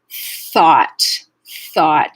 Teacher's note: we avoid using an s or an f sound so thought you won't feel any vibration here you're just letting the air pass your vocal folds you're not actually activating the vocal folds · you won't feel voicing until the vowel and then the voicing will go away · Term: voiceless th